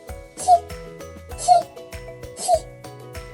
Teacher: звук ч приголосний м'який глухий